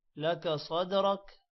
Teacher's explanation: صاد موٹا ہوگا، دال پر قلقلہ ہے اور را بھی موٹا ہوگا